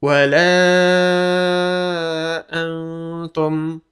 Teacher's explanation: An, in, un bertemu dengan salah satu dari huruf-huruf ini, maka bacaan dibaca ikhfa atau agak samar-samar mendekati suara eng